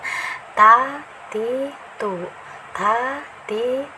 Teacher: Nah, datar saja ya, ringan saja ya. Ini mahrajnya ada di ujung lidah bertemu dengan pangkal gigi seri atas ya.